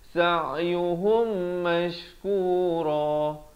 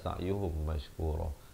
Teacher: mim mati bertemu mim kena dengung dua harakat. Sa'yuhum baru masuk mash.